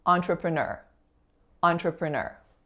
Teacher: it's that final syllable that's receiving the primary stress